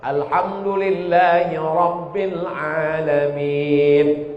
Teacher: Ra-nya mesti tafkhim tebal.